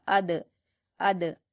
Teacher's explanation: حمزہ پر حرکت جلد پڑھیں گے، دال پر جزم ہے، حمزہ کو دال سے ملا کر پڑھیں گے، اور دال حروف قلقلہ میں سے ہوتا ہے، اس لیے یہاں پر قلقلہ کیا جائے گا